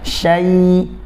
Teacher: Jadi betul-betul ya itu makhrajnya berada di tengah lidah bertemu dengan langit-langit. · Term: huruf ya